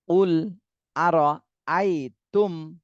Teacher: মিম সাকিনের পরে এই যে হামজা আসছে, বা মিম কোনোটাই আসেনি, এজন্য এই মিম সাকিনে স্পষ্ট করে পড়তে হবে।